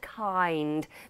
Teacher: the I diphthong again I move from one vowel to the other I I like in the word kind but I kind yeah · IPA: /aɪ/